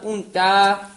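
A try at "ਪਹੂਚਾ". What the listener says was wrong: पूंचा दलैंकड़ ला के दीर्घ उच्चारण करना, पूंचा नहीं कहना, पूंचा।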